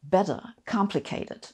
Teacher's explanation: In American English, it's quite common to use tap T's that sound kind of like D's